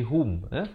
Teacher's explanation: Jangan baca hum tapi hum. Ha baris dhammah bunyi hu, bukan bunyi ho.